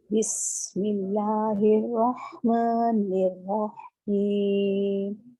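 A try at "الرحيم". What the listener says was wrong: अच्छा, रहीम में आपका ना रॉ हा से जुड़ रहा है, मतलब रॉ के बाद हा पे साकिन आ रहा है, यहाँ तो साकिन नहीं है ना?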